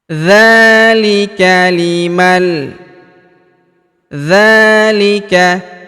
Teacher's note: huruf dza kita panjangkan dua harakat karena alif kecil di atasnya